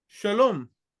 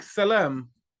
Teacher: the sh sound and the S sound being equivalent in Hebrew and Arabic